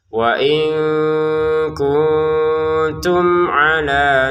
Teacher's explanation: mim sukun bertemu ain ini kita baca dengan jelas. Kalau jelas memang enggak ada samarnya, enggak ada dengungannya.